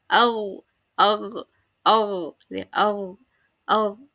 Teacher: Meninggi. Meninggi pangkal lidahnya meninggi. Kemudian sehingga tebal huruf-hurufnya ketika mengucapkan huruf tersebut menjadi tebal. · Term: istiala